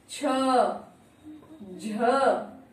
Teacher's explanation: देखिए कितना जोर लगाना पड़ रहा है, हमारी जो वायु बाहर आ रही है प्राणवायु वो अल्प से थोड़ी ज्यादा आ रही है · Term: महाप्राण